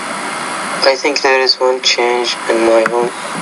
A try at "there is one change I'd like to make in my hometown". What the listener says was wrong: Now, when you're speaking, you want to make sure you vary your tone more than you're doing. You're speaking, there is one change I'd like to make in my hometown. But that's not English.